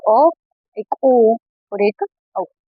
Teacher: कंठ और ओष्ठ से उच्चारित कंठोष्ठ है